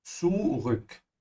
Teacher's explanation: The U becomes an Ü. And the difference is your tongue. You have to stretch it forward.